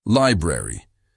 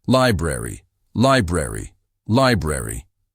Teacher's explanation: Notice how the middle R sound is soft and the A sounds like uh